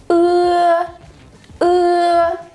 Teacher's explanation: То есть это сочетание звука «Ы» и «Э» в русском языке. Вы коротко произносите звук «Ы» и сразу тянете звук «Э».